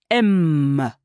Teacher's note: [Musique] m Ce chatouiller que vous éprouvez c'est la vibration du son sur vos lèvres et dans votre nez